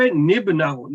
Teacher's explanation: تو اس کے لیے پھر عربی میں اس کو نون قطنی یہاں پہ لکھا جاتا ہے, چھوٹا سا ایک نون, اور اس نون کو ہمیشہ کسرہ کے ساتھ ادا کیا جاتا ہے